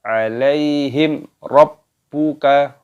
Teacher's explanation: sukun bertemu dengan huruf ro hukumnya dibaca izhar syafawi Jadi tidak boleh didengungkan harus dibaca jelas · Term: idhar syafawi